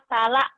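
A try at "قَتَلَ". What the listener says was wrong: Jangan kepanjangan ya. Cuman 2 ketukan. Kotala.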